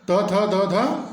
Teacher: त थ द ध दंत ध्वनियां है